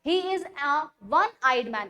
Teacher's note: ओ के अंदर ओ की आवाज नहीं आ रही है, ओ के अंदर आ रही है व की आवाज, यानी डब्ल्यू ए व, और ये आवाज आ रही है यानी डब्ल्यू से आ रही है।